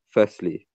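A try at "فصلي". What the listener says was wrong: It sounds like a scene. That sad sounds like a scene. Make sure it's a sad.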